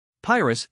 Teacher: the emphasis is on the first syllable, with a long I sound